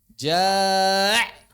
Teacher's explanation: Terlalu menekan kuat sehingga muncul suara tambahan. Ja', misalnya gitu ya, kayak orang mau muntah.